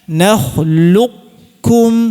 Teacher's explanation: Namun ada versi yang kedua, dan ini dibolehkan, silahkan ya, yaitu qafnya, sifat qafnya tetap dihadirkan sifat tebalnya. Ya, kita baca nakhluqukum, silahkan.